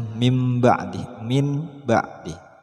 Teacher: membaca suara nun mati atau tanwin seperti suara mim mati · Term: iqlab